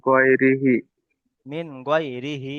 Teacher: নুন সাকিনের পরে হুরুফে হালকির 6টি অক্ষরের মধ্যে থেকে গয়ন এসেছে, তাই নুন সাকিনকে বিনা গুণনায় জাহির করে তাড়াতাড়ি পড়তে হবে।